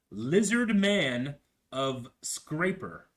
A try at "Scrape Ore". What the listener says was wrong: It's not scraper ore. It's just scrape ore. Like a ore.